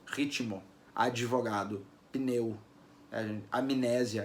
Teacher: Na pronúncia coloquial, é comum a gente acrescentar uma vogal I. Ritmo, advogado, pneu, amnésia, a gente coloca um izinho aparecendo ali.